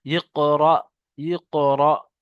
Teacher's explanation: আর হামজার উপরে সাকিন থাকলে একটু ধাক্কা দিয়ে পড়তে হয়, যেটা তাকতি নাম্বার 12-তে পড়েছি আমরা জজম ও সুকুনের অনুশীলনে।